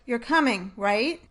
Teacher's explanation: first has a falling pitch on the words you're coming, and then a rising pitch on the word right?